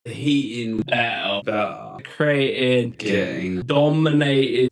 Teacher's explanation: both use glottal stop for T inside words between vowels.